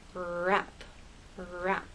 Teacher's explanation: With R and rap, the tip of your tongue goes up towards that bump, but it doesn't touch. The rest of your tongue is sort of bunched up and tight and raised towards the roof of your mouth.